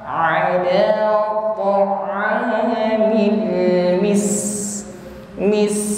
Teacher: huruf sin sukun tampak sifatnya al-hamas ya, jarayanun nafasi, alirkan nafas